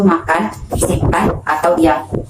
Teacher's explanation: konsonan nasal bilabial M itu dibentuk dengan kedua bibir dikatupkan kemudian dilepaskan melalui rongga hidung